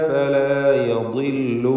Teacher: ഫലാ യദില്ലു ضادിന് കസ്ർ നേരത്തെ സൂചിപ്പിച്ച പോലെ കുറഞ്ഞ തഫ്ഖീം കൊടുക്കുക